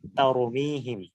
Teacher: তারপরে আমরা যদি কোরআনের আরেকটা আয়াত দেখি, তারমিহিম বিহিজারাতিম মিন সিজিল, এখানে কিন্তু তাটা তা একটু চিকন তা ভাবে উচ্চারিত হচ্ছে, তয়ের মতো না।